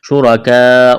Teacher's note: الف کے برابر کھینچنا ہے. شرکاء را کے اوپر زبر ہے موٹا کرنا ہے